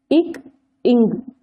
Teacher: இரு மெய்களும் நாவினது முதற்பகுதி அன்னத்தை தொடுவதால் பிறக்கின்றன